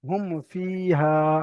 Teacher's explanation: এবারে ইজহারে সাফাবি মিম সাকিনের পরে যদি মিম আর বা ছাড়া অন্য কোন অক্ষর এসে যায় তাহলে মিম সাকিনকে বিনা গুনা জাহির করে তাড়াতাড়ি পড়তে হয়